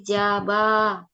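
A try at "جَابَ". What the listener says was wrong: Ja-nya yang panjang, bukan ba-nya, Bu. Jaba. Ba-nya nggak panjang, ja-nya yang panjang. Kan wawunya yang di tengah kan?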